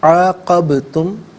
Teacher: با ساکن ہے لیکن حرف قلقلہ ہے، تو آواز لوٹتی بھی محسوس ہونی چاہیے